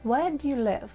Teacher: So we stress where and live.